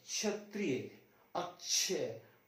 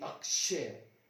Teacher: क और श की आवाज आती